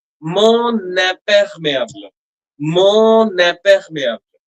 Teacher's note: when there is a vowel coming, the final n, is linked to the next vowel